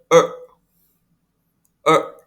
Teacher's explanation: Dan yang ke-8, vokal yang ke-8 bacanya er. Nah, R-nya tidak terdengar bergetar seperti dalam bahasa Indonesia. Namun dia hanya membaca tapi lidahnya ditekuk ke dalam.